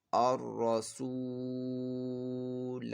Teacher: پہلے تو یہ را کو جو ہم نے پر پڑھنا ہے کیونکہ را کے اوپر زبر ہے، را کو پر پڑھنا ہے، اور یہاں پہ واو مدہ ہے، واو ساکن سے پہلے پیش ہے، تو اس کو ایک الف 2 حرکات کے برابر کھینچ کر پڑھنا ہے، اور یہ لام جو ہے اس میں جلالت کا نہیں ہے تو ہم نے اس لام کو باریک پڑھنا ہے، اور یہاں پہ الف کے اوپر گولدار ہے تو یہ زائد الف ہے، اس کو ہم نے وصل، جیسے ابھی ہم پڑھ لیں، اس کو نہیں پڑھیں گے.